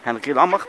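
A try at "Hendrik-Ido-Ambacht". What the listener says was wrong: Hendrikie de Lambacht. Je zegt het verkeerd, de klemtoon is verkeerd. De klemtoon is Hendrikie de Lambacht.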